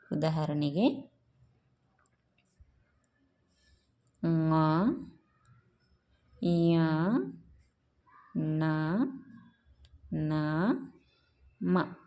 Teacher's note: ಮೂಗಿನ ಸಹಾಯದಿಂದ ಉಚ್ಚರಿಸಲ್ಪಡುವ ಅಕ್ಷರಗಳಿಗೆ ಏನಂತೇಳಿ ಕರೀತಾರಪ್ಪ ಅಂತಂದರೆ ಅನುನಾಸಿಕಗಳು ಅಂಥೇಳಿ ಕರೀತಾರೆ.